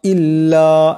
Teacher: এখানে লামের উপর মদ আছে এটাকে লাম্বা করে পড়তে হবে